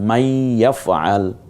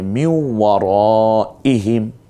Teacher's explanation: ওয়ার উপরে তাসদিদ এবং ইয়ার উপরে তাসদিদ হলেও গুন্না হবে, কিন্তু ওয়াজিব গুন্নার মাকামে সে পৌঁছে না, ওই স্থান পর্যন্ত উন্নীত হয় না, কিন্তু গুন্না করতে হবে।